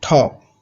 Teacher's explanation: So they add a little H sound, little aspiration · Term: aspirated T